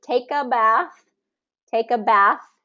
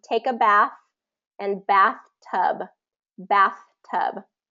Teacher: the th sound is that voiceless th sound